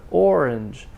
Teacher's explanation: So the main stress is on the first one, so that's longer. Orange. The second syllable is very short, orange, and it ends in a j.